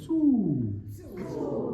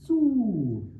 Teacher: Make and hold that u long, so it's not chewed